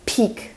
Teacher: You say peak, and there's a bit of air that flows through. You say peak, and it has a strong puff of air after it. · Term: aspirated